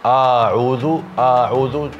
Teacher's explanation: ada mad, kepanjangan huruf alifnya